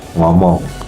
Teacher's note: Pada vokal eng itu bagian udara keluar melalui hidung waktu bagian punggung lidah itu menyentuh langit-langit lunak